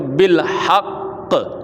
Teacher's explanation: حرکت کو ظاہر نہیں آپ نے کرنا لیکن تشدید اس کی سختی آپ نے باقی رکھنی